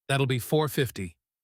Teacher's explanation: In fast speech, this often sounds like that ill be, all connected together. Almost like one word.